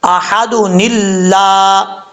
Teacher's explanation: اب یہاں پر اگر آپ اس کو ملا کے پڑھیں گے، وقف کریں گے تو دال ساکن ہو جائے گا احد، ملا کے پڑھنا چاہتے ہیں تو پھر یہاں پہ نون قطنی پڑھا جائے گا، نون قطنی کو کسرہ کے ساتھ یعنی زیر کے ساتھ پڑھا جائے گا